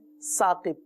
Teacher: हम अपनी मादरी ज़बान में या उर्दू ज़बान में सा जो है सीन की तरह अदा होता है।